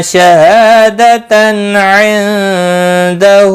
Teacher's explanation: تنوین کے بعد حلقی عین آیا ہے، اظہار حلقی ہوگا · نون ساکن کے بعد حروف اخفا کا دال آیا ہے، اخفا حقیقی ہوگا۔ ہا کے اوپر الٹا پیش ہے، ایک الف کے برابر کھینچ کر پڑھیں گے۔